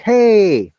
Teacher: my voice is going high we call it upper tone a rising tone